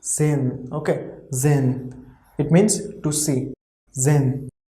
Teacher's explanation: H we have wrote here, but pronunciation of H will be like really less